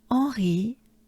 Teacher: Don't pay attention to that H. It doesn't exist. Let's pretend it doesn't exist. So it's directly en.